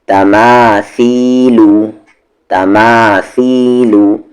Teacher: माँ को खींचेंगे क्योंकि इसके साथ अलिफ मद्दा है, सा को खींचेंगे क्योंकि इसके साथ या मद्दा है, और ता और लू को नहीं खींचेंगे क्योंकि उस पर सिर्फ हरकत है, सिर्फ हरकत है।